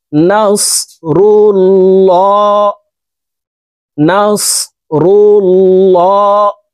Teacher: এই লামকে ল অর্থাৎ মোটা করে পড়তে হবে।